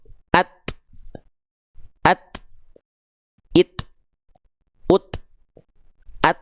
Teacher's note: Contohnya tadi misalnya huruf ta, dia akan terhenti dulu suaranya at, terhentikan ketika makhrajnya nempel at, nggak ngalir kan, tertahan kan suaranya, baru keluar percikan nafasnya